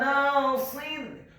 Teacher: huruf nunnya dibaca tipis tarqiq fathah 2 harakat karena setelahnya ada alif